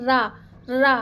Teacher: इसको अगर उच्चारित करेंगे तो जीभ का आगे का भाग मुंडा यानी कि रा बोलते हैं ना तो जो हमारा जीभ का आगे का तालु से टच करके और ये थोड़ा सा घूम जाता है। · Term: लुंठित